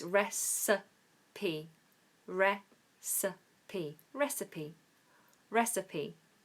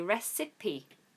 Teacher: With a schwa for the I